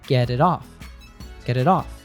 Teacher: In the phrase get it off, this actually happens twice. The T in get and the T in it both sound like a soft D sound. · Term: American T